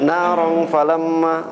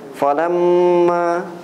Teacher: ada ghunah juga kan ditahan dua harakat lagi